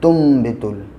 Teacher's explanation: ता नून साकिन के बाद जब बा आता है तो नून को मीम से बदल देते हैं।